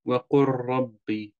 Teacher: Lam en ra zijn niet van dezelfde makhraj, maar die makhraj is heel dicht bij elkaar. Het is allebei een puntje van je tong, maar allebei moet je een puntje van je tong anders zetten. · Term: mutaqarib